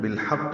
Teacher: بالحق میں لام پڑھا جا رہا ہے، اظہار قمری ہے. حا وسط حلق سے ادا کریں گے، قاف سے ملائیں گے، قاف پر پڑھیں گے